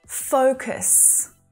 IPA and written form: 'fəʊkəs (FOCUS)